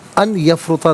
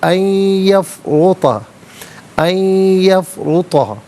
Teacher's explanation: ان میں نون ساکن ہے، اسے یفرطا کی یا کے ساتھ ملائیں گے اور نون کی آواز نہیں بلکہ یا کی آواز کو ادا کیا جائے گا. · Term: یرملون کا قاعدہ